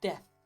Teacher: I think a lot of people replace the TH at the end of words with the F sound.